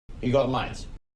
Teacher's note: the U sound in you has changed to the schwa sound. So it sounds more like y. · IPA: yə